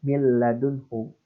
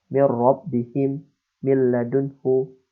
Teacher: Maka min ladunhu tidak boleh didengungkan. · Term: idgham bila gunnah